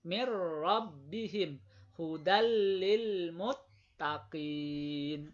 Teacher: Jadi idgham bila gunnah masuk dengan tanpa dengung. Jadi hurufnya masuk, nunnya, tanwinnya sepertinya hilang gitu, tapi tidak dengung.